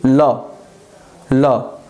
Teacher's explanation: कि आप ल बोल रहे हैं और आपके जीभ के दोनों बगल, आपके जीभ के दोनों बगल हवा इकट्ठा हो रही है। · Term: पार्श्विक